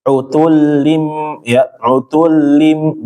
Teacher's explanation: Jadi lamnya jangan lama-lama ditahannya.